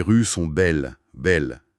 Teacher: Le S de rue, le S de belle, silencieux.